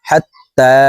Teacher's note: হাত তা খারা জবর তা তার উপরে খারা জবর আছে তাই এই তা হারফকে এক আলিফ টেনে পড়ব